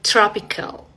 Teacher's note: cuando la t y la r van juntas en una palabra, vas a pronunciarlo como si fuera un sonido de che